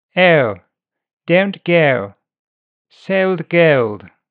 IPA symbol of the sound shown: ɛʊ